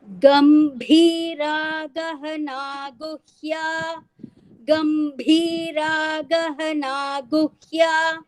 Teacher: भा is mahaprana in गंभीरा.